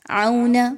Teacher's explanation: واو پر جزم کا نشان، عین پر زبر، واو لین ہے، 1 سے 2 الف کے برابر اس کی ادائیگی رکھیے۔ عین کو اس کے مخرج سے اچھے طریقے سے ادا کیجئے۔